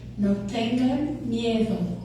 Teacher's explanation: when the letter D comes between vowels, it's pronounced like TH, as in they. So it's like M-I-E-T-H-O.